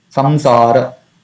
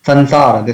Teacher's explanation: So here, often devotees say in India, I have seen Sansara. So instead of Anuswara, Ma, they say Na. Dantya Na. But it's not Na.